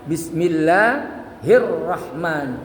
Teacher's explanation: Kalau di akhir atau di tengah kalimat maka alifnya harus ditiadakan, tidak dilafalkan ya. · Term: hamzah wasal